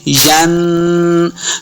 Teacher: नून साकिन के बाद कॉफ हुरूफ इख्फा से है, तो यहाँ पे गुन्ना करना है। कॉफ हुरूफ मुस्तालिया से भी है, इसको मोटा पढ़ना है।